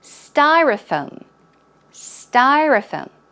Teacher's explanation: Styrofoam. So the first syllable is a bit longer and the stress goes on the first syllable.